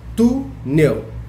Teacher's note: Túnel tem o acento no U e a sílaba mais forte é o tu.